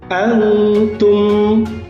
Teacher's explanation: Kemudian antum mim mati ketemu ain, ini apa hukumnya anak-anak? Itu adalah izhar syafawi, harus jelas.